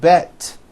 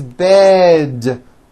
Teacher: Now also remember to add voicing to words with D endings. Bed has a voiced D ending. It's not bet with an unvoiced T.